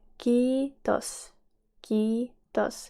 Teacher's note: A lot of people tend to go for kiitos, like a short I, but here you need to remember that the I is long.